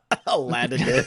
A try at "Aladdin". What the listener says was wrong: He's got 2 Ds, man. 2 Ds. You gotta pronounce them.